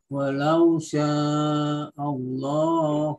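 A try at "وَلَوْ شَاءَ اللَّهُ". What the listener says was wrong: A-nya enggak boleh Allah, enggak boleh O, tapi A, Pak. Walau sya'allahu.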